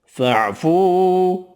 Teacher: فَاعْفُوا واو مدہ ایک الف کی مقدار میں کھینچ کر پڑھیں گے